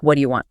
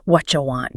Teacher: in fast speech that T from what meets the Y from U and they merge into a T sound like in church.